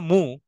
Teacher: দেখেন ঠোঁটটা গোল হয়ে যাচ্ছে ঠোঁটটা জয়েন হয়ে যাচ্ছে দুই ঠোঁট জয়েন হয়ে মু সাউন্ড বের হচ্ছে উ হচ্ছে এই যে দুই ঠোঁট যেহেতু জয়েন হয়ে যাচ্ছে এজন্য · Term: দম্মা